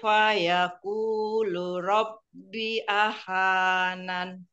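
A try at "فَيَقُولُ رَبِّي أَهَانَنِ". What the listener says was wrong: Binya itu panjang 4 atau 5 harokat. Iya, setiap ada yang seperti bendera ya itu ya. Itu panjangnya 4 atau 5 harokat. Jadi lebih panjang.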